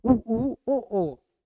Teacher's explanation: जब हम उ ऊ ओ का उच्चारण करते हैं तो हमारे होष्टों की जो आकृति है वो क्या हो जाती है? गोलाकार हो जाती है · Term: वृत्ताकार स्वर